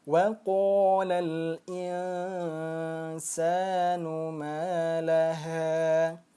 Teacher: qa-nya ada fathah bertemu dengan alif, maka dia termasuk mad tabi'i lagi. Nah, panjangnya 2 harakat.